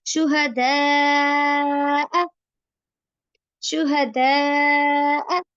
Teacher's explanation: دا کو لمبا کر دیا مد کی وجہ سے، دال زبر الف دا اور اس مد کی وجہ سے اور زیادہ لمبا ہو گیا. اکم، حمزہ زبر آ، اس کو لمبا نہیں کرنا، صرف دال زبر الف دال لمبا ہو رہا ہے لیکن حمزہ زبر آ لمبا نہیں ہو رہا.